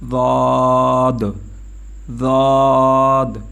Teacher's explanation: اس کی مخرج زبان کی کروٹ اور اوپر کے ڈاڑوں کے جڑ سے ادا ہوتا ہے